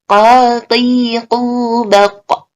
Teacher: Qaf ketika waqaf itu harus pental juga, harus qalqalah juga.